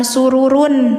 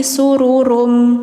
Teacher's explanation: Jadi suara N-nya dimasukkan ke M. Rummar fuah fiha sururum marfu. · Karena di sini setelah tanwin domahnya ada huruf idgham. Idgham itu memasukkan, jadi suara N-nya dimasukkan ke M. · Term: idgam